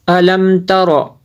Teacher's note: میم کو جو ہے اس میں غنہ نہیں کر سکتے کیونکہ یہاں پہ اظہار شفوی ہوتا ہے